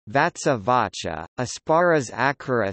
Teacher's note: t and p become c before s, and the sibilant assimilates to the preceding sound as an aspirate